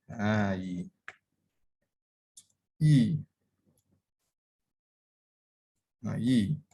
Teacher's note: So bila bahagian tengah lidah sentuh langit kemudian dia berpisah, maka itu adalah makhraj muqaddar untuk ya mat. Kerana dia dah memberi ruang kepada huruf kepada angin tadi untuk melalui bahagian rongga mulut lah.